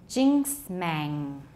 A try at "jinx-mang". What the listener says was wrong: And I noticed that put an epithetic K in there.